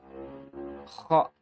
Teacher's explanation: Haddu dzahir, batasan bagian luar itu adalah tempat keluarnya atau makhrajnya huruf kha. Makhrajnya huruf kha itu berarti bagian tenggorokan paling atas. Atau daerah pangkal lidah dan langit-langit mulut yang ada dagingnya itu loh.